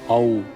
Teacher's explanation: The wider form of combining a long A with U. It demands the broadest possible initial opening before snapping into a forward round.